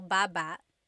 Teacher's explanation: Emphasis is on the first syllable